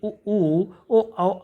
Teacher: जिन स्वरों के उच्चारण में ओठ गोलाकार होते हैं वह वृत्तमुखी स्वर कहे जाते हैं